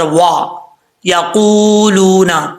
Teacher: واؤ کو پڑھتے وقت ہونٹ گول کریں گے